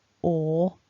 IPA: ɔ: